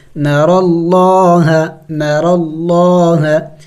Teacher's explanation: چونکہ یہاں پہ لفظ اللہ سے پہلے زبر ہے تو یہاں لفظ اللہ کو ہم موٹا پڑھیں گے